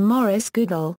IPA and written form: ˈɡʊdˌɔːl (Goodall)